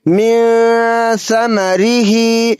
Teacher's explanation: کے بعد حرف اخفا میں سے فا موجود ہے تو یہاں نون ساکن کی آواز کو ناک میں چھپا کر اخفا کر کے پڑھیں گے